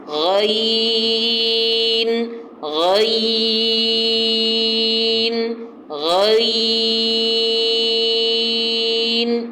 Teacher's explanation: اس کا جو مخرج ہے وہ ادنیٰ حلق ہے غین کا، کہ یہ حلق کا وہ حصہ ہے جو منہ کی طرف والا ہے